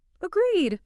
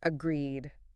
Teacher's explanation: the pitch of your voice should fall slightly at the end to show finality. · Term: downward inflection